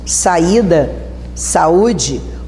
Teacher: Então aproveita aí na tua direita que diz assim, para acentuarmos o I e o U, pela regra dos hiatos, o segundo elemento tem que ser o I ou o U. A tônica da palavra, força, tem que ser no I e no U. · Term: hiatos I, U